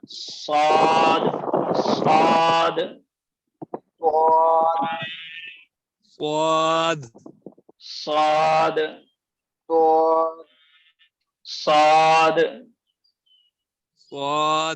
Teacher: जिस तरह छोटा सीन का मखरज था इसी तरह साद का मखरज है, बस फर्क ये है दोनों में कि इसको मोटा करना है।